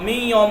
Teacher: من یوم نہیں پڑھیں گے، می یوم ناک سے ادا ہوگا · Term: غنہ